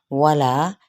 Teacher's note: वाव होंठों की ना तमाम गुलाई के साथ और ला मद्दे बिल अलिफ का कायदा।